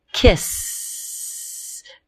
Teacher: Let's take the base word kiss. If I hold that last sound, kiss, there's no buzzing. This is called a quiet or unvoiced sound.